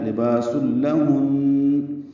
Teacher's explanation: ہے، یعنی یہی لفظ ہے۔ لباس میں با الف مدہ ہے، سین کو لام سے ملا دیں گے، ادغام کامل